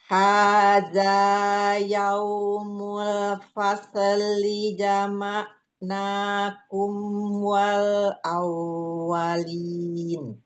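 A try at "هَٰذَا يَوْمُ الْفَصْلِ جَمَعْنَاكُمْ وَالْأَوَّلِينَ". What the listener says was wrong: Nah, Umi di spot sukun jangan kol-kolah. Tosli.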